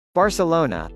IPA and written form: ˌbɑːrsəˈloʊnə (Barcelona)